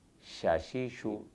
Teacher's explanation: زبان کا بیچ والا حصہ، یعنی زبان کا جو سینٹر ہے جس کو شجر لسان کہتے ہیں، جب منہ کے تالو سے لگے تو شین ادا ہوتا ہے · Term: شجریہ